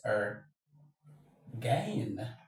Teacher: The stress is always on the second syllable.